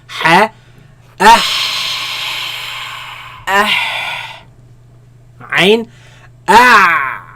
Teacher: They come from the middle of the throat, where the epiglottis moves back towards the back of the throat, right? And constricts the passing of the sound and the air, right?